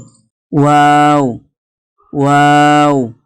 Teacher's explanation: দুই ঠোঁট না মিলিয়ে মাঝখান হইতে উচ্চারিত হয় ওয়াও